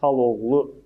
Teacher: xala sözündəki a düşəcək, kəmiyyət fərqi yaradacaq və bu söz olacaq xaloğlu formasında